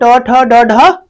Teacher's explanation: टवर्ग का मतलब ट ठ ड ढ और र, और एक है मूर्धन्य स। ये सभी किससे निकलते हैं? तो हमारे मूर्धा से निकलते हैं। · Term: मूर्धन्य वर्ण